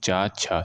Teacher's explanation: चा वर्ग के वर्ण होते हैं उनका जो उच्चारण स्थान होता है व तालू से होता है